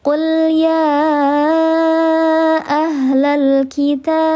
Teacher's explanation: Ini hamzah wasol, dia tidak terbaca ketika diwasal, tengah kalimat tidak terbaca.